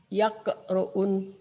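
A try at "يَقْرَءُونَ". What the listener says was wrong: Yaqra'u jangan diunkan kan satu.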